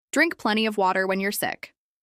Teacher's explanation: Plenty of this is pronounced with stress on plen and of is often reduced